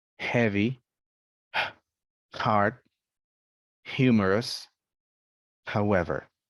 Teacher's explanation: and here it says is a soft sound like deep breathing it's produced by air going through the vocal cords and the sound should not sound noisy it's not pronounced at the back of the mouth so something